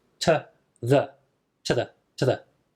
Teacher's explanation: change both the U and the e to a schwa sound it becomes to that to that to that when it's reduced